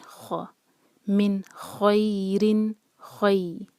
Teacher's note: اس کے بعد ہے من خَيْرٍ، نون کلیئر، آگے خا ہے، خا حروف حلقی ہے اور خا ہیوی لیٹر ہے، تو ہم منہ بھر کر پڑھیں گے